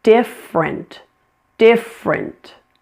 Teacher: Notice this word has a dropped middle syllable. It's only 2 syllables.